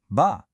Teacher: A sound you make by closing your lips.